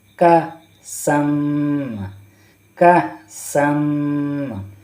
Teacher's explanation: اور جب حمزہ ساکن، حمزہ کے اوپر کوئی ساکن حرف ہوتا ہے، ساکن حرکت ہوتا ہے یعنی سکون ہوتا ہے تو حمزہ کو جھٹکا دے کر پڑھتے ہیں. کاف حمزہ زبر کہ، کاف حمزہ زبر کہ، سین دو زبر سم، کہ سم، کہ سم.